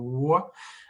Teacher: Donc, un W, c'est très, très similaire à un OU plus court. C'est très la même forme des lèvres. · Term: demi-voyelles